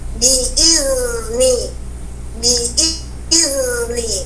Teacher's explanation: Hamzanya yang panjang, khotok ya. Kita harus bunyikan zalnya yang harus mengalir bunyi.